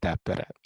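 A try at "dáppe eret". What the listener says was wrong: This eret, try to say it a little bit more clearly. Ednille dappe eret, so that you get like a extra stress on eret, so that you don't put it together. So dappe eret.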